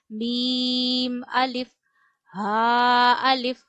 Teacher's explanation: व अलिफ, व ऊपर वाले दांतों के अंदरूनी किनारों पे जबान का सिरा रखिए और मोटा पढ़िए, व अलिफ। मीम अलिफ, मीम की अदायगी में भी आवाज नाक में नहीं जानी चाहिए और दोनों होंठों के खुश्क हिस्से से मीम अदा किया जाता है, मीम अलिफ। हा अलिफ, हा गले के आखिर से अदा किया जाता है।